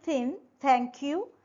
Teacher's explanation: In order to produce the sounds th and the tip of the tongue is just behind or slightly between your upper and lower set of teeth, and the air is blowing out gently over the tongue and through the teeth. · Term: dental